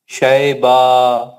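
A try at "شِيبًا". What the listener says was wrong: شیبہ، شیبہ نہیں ہے میرے بھائی، زیر ہے، شین کے نیچے زیر ہے.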